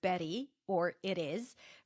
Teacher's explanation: my flap T is the r sound when the T is between two vowels, like in the word Betty or it is, right?